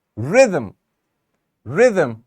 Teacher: the stress in the first syllable or in the second one we are going to focus on the first syllable this is where the primary stress will be